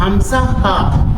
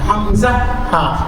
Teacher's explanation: شروع حلق سے بغیر کسی علت اور بغیر کسی طاقت کے، بغیر کسی پریشانی کے ادا ہونے والے 2 حروف